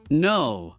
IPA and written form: nəʊ (no)